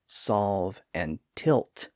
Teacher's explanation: if you say words like solve and tilt you may notice that the tongue never actually touches that Ridge behind the teeth again again it varies a little bit from person to person